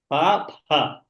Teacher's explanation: You can say pha, not fa. In Sanskrit, there's no fa. It's pha. Pha, pha. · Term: Mahaprana